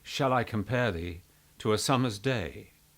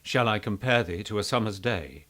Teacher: if I put the pitch of my voice up very slightly, if I sounded slightly more like a tenor than a baritone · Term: very slight raising of the voice